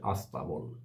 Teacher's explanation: মানে ঘোড়া রাখার জায়গা ঘোরাশালা স্ট্যাবল শব্দের বাংলার রূপ হয়েছে আস্তাবল উচ্চারণের ক্ষেত্রে সামনে একটা আ ধ্বনি চলে এসে উচ্চারণ হয়ে গেছে আস্তাবল · উচ্চারণের ক্ষেত্রে সামনে একটা আ ধ্বনি চলে এসে উচ্চারণ হয়ে গেছে আস্তাবল, তাহলে আদিতে আ এসছে, এটাও আদি স্বরাগম হলো। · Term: আদি সরাগম